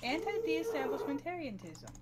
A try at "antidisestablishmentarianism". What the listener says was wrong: Disestablishment. You said de-establishment.